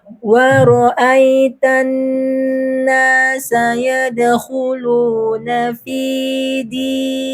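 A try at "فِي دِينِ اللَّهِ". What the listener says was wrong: Panjang tinggi sini. Fi 2 harakat. Fi dinillahi. Wa ra'aitan nasa yadkhuluna fi dinillahi afwaja.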